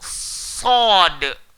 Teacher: Hujung lidah, langgar belakang, gigi bawah. Bukan gigi atas. Kalau gigi atas jadi huruf ta, dal, ta. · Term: huruf sad